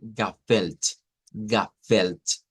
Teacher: Cuando veamos la A con la diéresis, es una vocal E abierta.